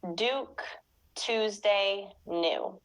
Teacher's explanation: the y sound, which Americans don't normally pronounce in many words